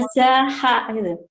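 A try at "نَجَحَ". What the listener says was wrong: Jimnya keras ya, Bu, ya.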